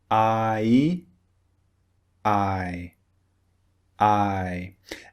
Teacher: it's actually two vowels pushed together